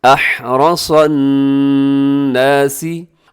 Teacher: نون کے اوپر شد ہے تو یہاں غنہ کیجیے گا، آواز کو ناک میں رکھیے گا